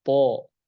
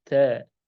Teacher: huruf to dia harus tebal atau terangkat lidahnya. To. Adapun ta tipis ta.